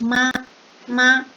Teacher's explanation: For the first tone, the pronounce will at the same level.